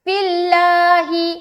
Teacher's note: یہاں دیکھیں گے فا کے نیچے زیر ہے تو اس کو ہم باریک رکھیں گے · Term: لفظ اللہ کا لام